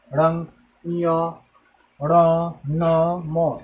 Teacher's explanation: यानी बोलते समय जो हमारे हवा निकलेगी वो नाक से निकलेगी, उससे हम नासिक के व्यंजन करते हैं।